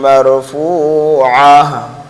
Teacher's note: گول تا ہے اس لیے ہائے ساکنہ سے اس کو بدل دیں گے